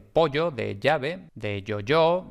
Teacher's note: La fricativa palatal sonora, que es la Y